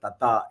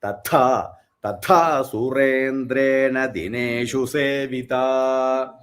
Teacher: It is not Ta. First is Alpa Prana Ta, then Mahaprana Tha.